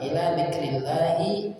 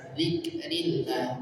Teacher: ila panjang 2 harakat